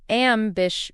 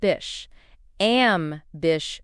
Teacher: For pronunciation, it's ambish. The stress is on the second syllable.